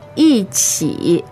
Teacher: there's a tone change, so it's fourth tone, third tone